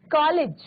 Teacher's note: यह आ और ओ के बीच की ध्वनि है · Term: अर्ध चंद्र